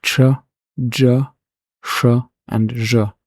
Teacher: sounds that weren't quite palatal but produced somewhat more in the front towards the tooth ridge (post-alveolar) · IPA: /tʃ/, /dʒ/, /ʃ/ and /ʒ/